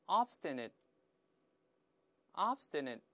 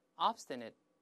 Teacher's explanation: 家里边去了。住在乡下，这个城里边就没什么人了。Descend▁on▁叫突然降临，哎，这是表示某个抽象的事物。好，这个▁descend▁几个常见意思，希望大家把它牢牢记住。最后，我们来看一个词，叫做顽固地、固执地。我们跟老师再大声读一下，这个音节比较多，不好读，慢慢来一点。那先慢慢来一遍▁，obstinately。再来一遍▁，obstinately，▁叫顽固地、固执地。它的形容词形式把那▁ly▁去掉就行了。我们先大声读一下▁，obstinate，obstinate。老师说过▁，ate▁在形容词中一般不读成▁it，▁而发▁it，▁ 读快之后后面那个▁t▁失去爆破 ，所以是▁it，▁顶住上牙膛，大声来一遍▁，obstinate，▁那个后面▁ne。最后▁t▁舌尖顶住憋住气，在里面▁obstinate▁叫固执的、倔强的，这贬义词了，就错误的观点总是保持住不放。来，比如说▁the▁old▁man▁is▁as▁obstinate▁as▁a▁mule，▁这个老爷子啊，哎呀，像一只骡子一